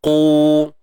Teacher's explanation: Kemudian qu tebal selamanya lah, huruf isti'la, terangkat pangkal lidah.